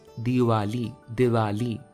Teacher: और जब हम दिवाली बोलते हैं तो दोनों होठ करीब आ जाते हैं, ऑलमोस्ट लाइक तुम किसी सेल्फी में पाउट कर रहे हो।